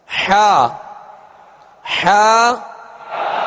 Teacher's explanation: حا عین یعنی عین حا کا ایک ہی مخرج ہے، وہ وسط حلق یعنی حلق کا درمیانی حصہ